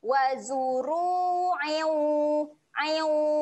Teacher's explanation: Okey, kat sini dia ada bacaan dengung. Okey, dengung dia sedia nak sebut huruf waw. Jadi waktu kita dengung tu kita sedia nak muncunglah.